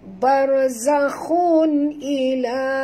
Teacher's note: Ra ini bila dia mati huruf sebelumnya balik atas, kena baca tebal. Jangan baca bar, tapi kena baca bau bau, naikkan lidah ke atas, ya.